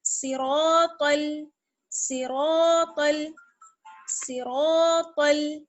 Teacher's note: صاد را اور طا تینوں موٹے پڑے جائیں گے